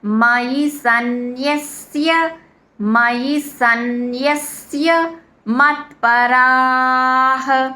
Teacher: రా దీర్ఘం విసర్గ ఉచ్చరణ రాహ హ అని పలకాలన్నమాట